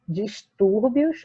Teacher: a gente tem aqui no tur a sílaba mais forte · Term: paroxítona